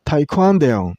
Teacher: use stress on the second syllable